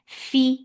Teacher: give hams in fa, for kasra, give e sound.